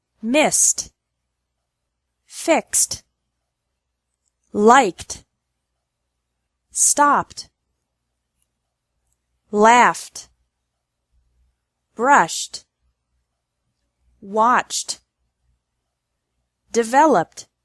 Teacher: Ed is pronounced like T with no extra syllable after verbs ending in S, X, K, P, F, SH, and CH sounds.